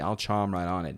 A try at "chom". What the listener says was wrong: Chom, not chomp. Chom. C-H-O-M.